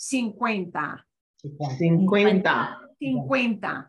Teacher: cincuenta and notice we've got a c-u-e in the middle and that u e they go together that's what we call a diphthong